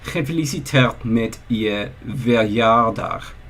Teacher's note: The first G should be a velar fricative.